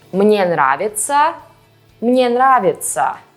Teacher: For now, just keep in mind that besides the differences in spelling, these phrases will sound the same, because the unstressed «я» is pronounced as «и»